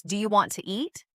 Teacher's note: Sometimes letters are dropped, like the T in want to, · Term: connected speech